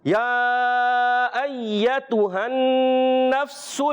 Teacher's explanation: فا کو کلیئر ادا کریں گے، سکون والا حرف ہے، ہلائیں گے نہیں، کلکلا نہیں ہونا چاہیے